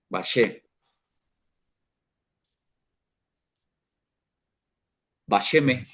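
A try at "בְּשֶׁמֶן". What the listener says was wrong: bashemen, la nun final. Bashemen.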